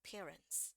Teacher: sampai e-nya enggak sampai dibunyiin banget bukan parents tapi parents parents jadi R langsung masuk ke n ya